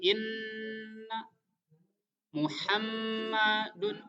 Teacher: bunyi dengung pada huruf nun dan huruf mim yang ditasdid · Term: huruf gunnah